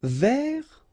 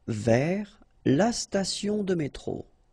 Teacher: so you don't pronounce the final S